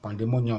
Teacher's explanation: Pandemonium, you have to stress the mo